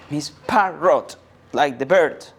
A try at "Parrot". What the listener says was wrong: No, not parrot. P-A-R-R-O-T, yes, but it's pronounced Parrot. The T is silent.